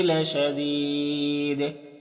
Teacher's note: یہاں پر وقف کریں گے تو دال میں قلقلہ ہوگا اور مد عارض وقفی ہوگا